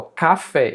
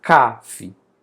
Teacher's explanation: Café, ela é uma oxítona porque a sílaba mais forte fica lá no final